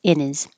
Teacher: you don't have to say the H in his